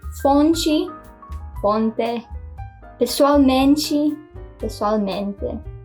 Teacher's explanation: it's /tʃ/ before an /i/ sound instead of /t/ before an /i/ sound